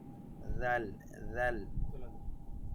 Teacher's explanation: জিহ্বার একদম সামনের সাইড উপরের দাঁতের সাথে লাগিয়ে বলতে হবে